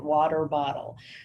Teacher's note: substitute all your T's, your T sounds, with a D